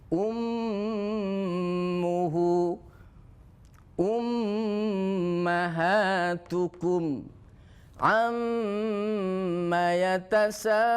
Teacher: Yang kedua adalah mim musyaddadah tajibul gunnah. Mim yang bertasydid wajib dibaca dengung.